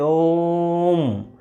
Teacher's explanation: ओ पर हमने इतना सारा जोर डाला जिससे एक प्रकार से तिगुना समय खर्च हो गया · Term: प्लुत